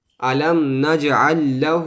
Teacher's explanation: الٹا پیش کو جو ہے وہ ایک الف کے برابر کھینچا جاتا ہے